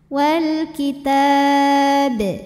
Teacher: sekali bacaan walitab dan jika berhenti b-nya ini Qalqalah Kubro karena huruf qalqalahnya sukunnya tidak asli melainkan sukun karena berhenti maka dibacanya dipantulkan dengan pantulan yang besar